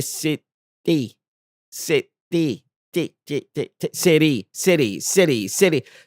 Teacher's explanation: this little flicker, flap, or tap on the upper alveolar ridge of your mouth